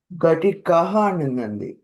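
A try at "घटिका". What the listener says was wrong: ఘటికః కాదు, ఘటిక. ఘటిక దీర్ఘం.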